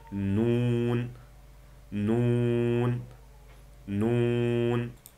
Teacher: Tilning uchi usti ikki udul tishimizning milikiga tekkiziladi va burun bo'shliqidan chiqadi.